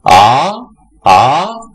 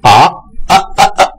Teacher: 阳平调最后不要憋住了